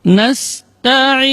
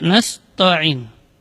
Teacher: Ta, ujung lidah berada di usul thanaya, di pangkal gigi seri atas. Dengan posisi lidah istifal, yaitu posisi lidahnya berada di bawah, tidak terangkat.